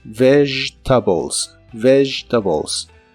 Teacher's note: Recuerda que la V es labiodental y vibrante en inglés y el sonido de la G en esta palabra es como un sonido sh, pero vibrante.